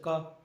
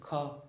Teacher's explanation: क अल्पप्राण हो गया। ख हो गया महाप्राण।